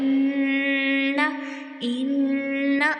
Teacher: और ध्यान रहे इन्ना नहीं पढ़ना, आइन का मखरज नहीं आना चाहिए, हमज़ा का मखरज आना चाहिए, अक्साए हलक। ठीक है, हलक का सबसे नीचे वाला हिस्सा, वहाँ पर आपने फोकस करना है जो सीने की जानब होता है।